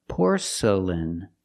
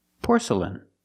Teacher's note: The next two syllables are not stressed, they are relaxed.